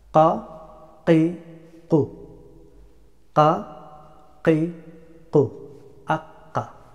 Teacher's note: The letter of qaf pronounced from extremely back end of the tongue and upper palate. This is a hard letter, so you need practice.